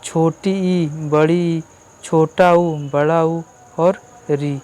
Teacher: तो समृत में पहले समझ लें तो समृत का मतलब ये कि जिसमें जो है कि मुंह बंद रहता है, जिसका उच्चारण करने में मुंह बंद रहता है उसको हम लोग समृत कहते हैं